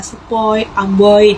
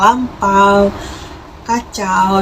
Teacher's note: pengucapan vokal yang kedua itu lebih jelas dibandingkan dengan pengucapan vokal yang pertama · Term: diftong naik